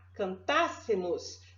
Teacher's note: mas é não existe existe sim aqui nós temos uma proparoxítona essa proparoxítona tem uma vogal tônica aberta